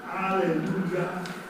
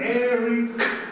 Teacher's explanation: One of the reasons that composers were very fond of the word Alleluia, apart from the fact that in Hebrew it means praise the Lord, is that you have this A-E-U-A, Alleluia, and they're all open vowels. You can hang on to them forever.